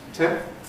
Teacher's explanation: We have to go from having a nasal, the [m], to having a plosive, the [p]. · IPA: ˈtempə